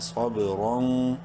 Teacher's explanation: صوب، را واو دو زبر رون، تنوین کے بعد واو حروف یرملون میں سے ادغام مع الغنہ ہوگا، الف سائلنٹ ہے۔